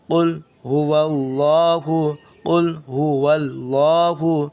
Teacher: تو اس کو آپ پڑھیں گے، دیکھیے، قاف لام پیش قل، قاف کو حلق سے نکالیں گے، قل ہا پیش ہو، جلدی، دونوں کو جلدی پڑھیں گے، واو لام زبر ول، لام کھڑا زبر لا، ہا پیش ہو، اس لام کو موٹا پڑھیں گے، اس لیے کہ اللہ سے پہلے، لفظ اللہ سے پہلے زبر ہے